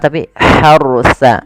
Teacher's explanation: Kemudian hati-hati dalam melafalkan ro-nya, ini bukan harsa tapi harusa. Ro-nya ditebalkan karena ada huruf ro sukun didahului dengan fathah